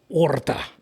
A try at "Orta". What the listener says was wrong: Orta. No. You don't have to roll the R. Orta. I know now it's becoming Spanish instead of Italian.